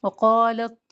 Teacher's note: قاف کے ساتھ الف موٹا پڑھا جائے گا